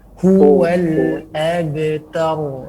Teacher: huwa itu tidak boleh masuk ke dalam hidung huruf wa, bukan wa. Inna syani'aka huwal abtar.